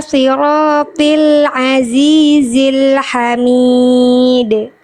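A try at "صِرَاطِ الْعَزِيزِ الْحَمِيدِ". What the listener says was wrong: Oke, tinggal di bagian ini, ya, dalam satu kalimat ada dua hal yang bisa dimaksimalkan. Dalam satu kata ini, ya, yang pertama huruf sod, yang kedua huruf to.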